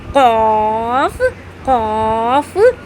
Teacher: پھر ہے بڑی قاف، اس کو بڑی قاف بھی کہتے ہیں، اس پہ دو نقطے لگے ہوتے ہیں، اس کو حلق کے بیچ والے حصے سے ادا کریں گے